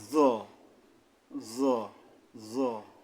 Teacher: সামনের উপরের দুই দাঁতের আঘাত থেকে মোটা আদায় হবে জ অর্থাৎ জিহ্বার আগাটা আইসা উপরের দাঁতে মিশবে মোটা ভাবে